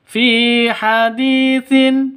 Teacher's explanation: fi panjang dua ketukan. Karena ada ya mati diawali dengan kasrah. Mad asli atau mad thobi'i.